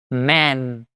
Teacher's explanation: terminou com som de n man, língua segura no céu da boca